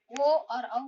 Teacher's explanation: ओ और औ का उच्चारण स्थान कंठ और ओष्ठ है।